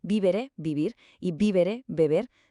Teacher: los hispanos pronunciaban vívere, vivir y vívere, beber de una forma muy parecida, casi indistinguible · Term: Esta fusión de sonidos